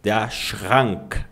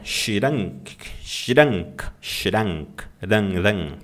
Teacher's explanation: O R, normalmente, ele é feito no fundo da garganta.